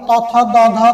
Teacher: দাঁতের অগ্রভাগ এবং জিহ্বার অগ্রভাগের সংস্পর্শে উচ্চারণ হচ্ছে সেটা হচ্ছে দন্তবর্ণ